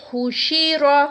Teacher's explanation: یہاں پر را جو ہے وہ موٹا ادا کیا جائے گا جب اس کو رما پڑا جائے گا